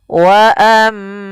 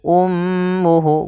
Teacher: bacaan ghunah yaitu suaranya menahan dulu suara mnya sepanjang dua harakat